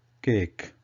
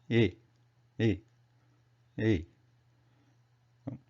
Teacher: So this is a mixture of A and E. So what happens here is we can start with A and then quickly change it to E sound. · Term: mixed vowels